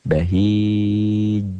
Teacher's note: Sedangkan qalqalah kubro, qalqalah besar ialah bunyi huruf qalqalahnya yang matinya bukan asal. Dia mati karena dihentikan. Berhenti membacanya.